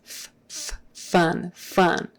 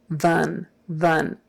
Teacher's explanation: V is f with your voice turned on